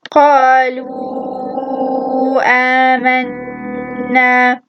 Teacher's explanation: But here I haven't actually extended the letter, so I only said قالوا آمنا. I extended the waw, but I did not extend the alif. I did not say آمنا.